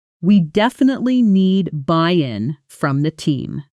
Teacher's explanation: The stress falls on buy in because that's the new important idea. This is called sentence stress and native speakers use it constantly almost unconsciously to guide the listener's attention to what matters most in a sentence. · We definitely need buy-in from the team. The stress falls on buy-in because that's the new, important idea.